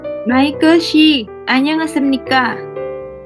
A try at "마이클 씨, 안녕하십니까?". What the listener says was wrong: Kurang di sini. Semuanya udah bagus, tapi kamu kurang di sini. Shim, ya, jangan sim. Shim, SYI. Bukan SIM kartu bermotor, bukan. Shim, SYI.